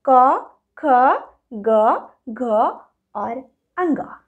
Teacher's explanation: पहला है कवर्ग, जिसका उच्चारण स्थान क्या है? उच्चारण स्थान है कंठ, गला।